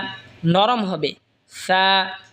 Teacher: সা জিহ্বার আগা সামনের ওপরের দুই দাঁতের আগার সঙ্গে লাগা উচ্চারণ হবে সা, নরম হবে সা।